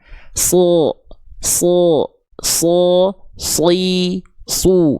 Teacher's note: Jadi lidah kita dibayangkannya bukan naik, lidah pangkal lidahnya bukan, tapi didorong ke dalam. So, tanpa monyong vokal O itu, vokal tebal itu akan keluar.